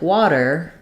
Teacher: I'm going to hear a flap there it's going to sound more like a d